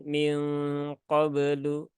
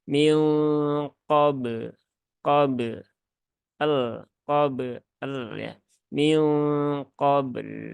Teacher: Dan ba itu kan dia punya kolkolah, maka tunaikan kolkolahnya.